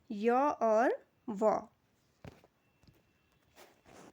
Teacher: इनके उच्चारण में जीभ और होठों का स्पर्श पूरी तरह से नहीं होता है। इस कारण यह ध्वनियां स्वर और व्यंजन दोनों के गुणों को दर्शाती हैं। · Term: अर्ध स्वर व्यंजन